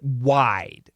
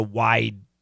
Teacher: And that it's not the I. It sounds like the I is getting stretched, and that's true, but it's because we need that vibration for the D